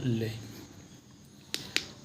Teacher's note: जिस व्यंजन को बोलने या उच्चारण करने में हवा पार्श्व के आसपास से निकल जाती है उस वर्ण को पार्श्विक व्यंजन कहते हैं